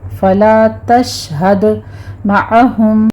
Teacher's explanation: تشہد میں آپ نے دال کے اوپر قلقلہ کرنا ہے · شین کے اوپر تفشی کر کے اس کو آپ نے ساکن کرنا ہے